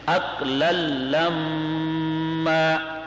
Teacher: اقلن کے 2 زبر کا آگے لام میں ادغام ہوا ہے لیکن غنہ نہیں ہے